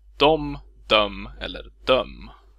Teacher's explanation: Ordets /e/ blir påverkat av /m/:et och byts ut mot ett å-, ô- eller ö-ljud beroende på dialekt